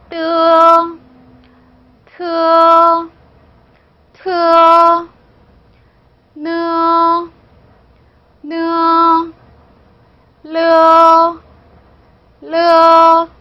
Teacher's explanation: 혀끝이 윗니빨 뒤에서 댔다가 떼는 소리예요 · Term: 설첨음